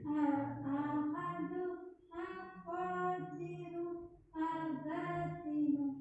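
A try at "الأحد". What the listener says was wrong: ya, yang awal pendek. Al-Ahadu begitu.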